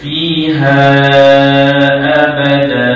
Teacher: Dia kena panjang da tu dua dua harakat.